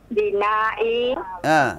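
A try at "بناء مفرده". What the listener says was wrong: kenapa bina'i kasrah dibaca? Enggak, salah bacaannya. Bukan bina'i, tapi bina'u dibaca u. Bina'u. Iya.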